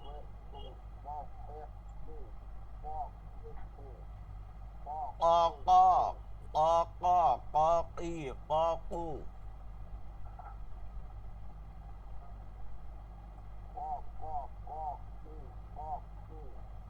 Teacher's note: জিহ্বার গোড়া তার বরাবর তালুতে লাগিয়ে কফ উচ্চারিত হবে। কফের সময় হলকের শেষ থেকে বাড়ি এখান থেকে বাড়ি মারতে হবে, ভারী উচ্চারণ হবে, ভারী।